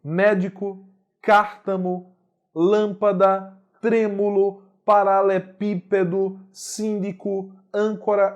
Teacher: todas as palavras cuja tonicidade recai na antepenúltima sílaba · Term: proparoxítona